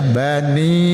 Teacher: Bedakan dengan maakum nantiika ini huruf yang ditempatkan sedikit di depan dari pangkal lidah di pas di pangkal lidah itu qf keluarkan sedikit di depannya ka watuz zakata ka itu bedakan yaqobani ba itu juga huruf antara dua bibir